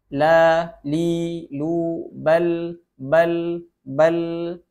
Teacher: Kemudian tawassut, pertengahan antara syiddah, tertahannya suara, dengan rokhawah, terlepasnya suara. Jadi huruf lam memiliki sifat tawassut, dia tidak tertahan dan tidak pula terlepas.